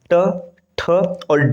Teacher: ट वर्ग का उच्चारण स्थान है मुर्धन्य